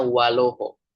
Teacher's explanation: kalau di sebelumnya ada waw, vowel a di alif tadi pindah ke waw yang sebelumnya, maka bacanya waloho